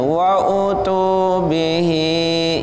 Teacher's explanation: hi-nya panjangnya satu alif, dua ketukan atau dua harokat. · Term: matsilah qasirah